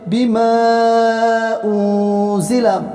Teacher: میم پر مد ہے، 3 الف یا 4 الف کھینچ کر پڑھیں گے